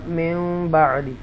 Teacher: نون ساکنہ کے بعد با آ رہا ہے اور یہاں پر میم اس کا ساؤنڈ لے لے گا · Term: اقلاب